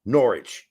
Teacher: So it ended up being Norwich. They just dropped the W completely based on how the evolution of the language changed.